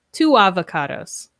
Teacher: we link the sounds with W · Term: W sound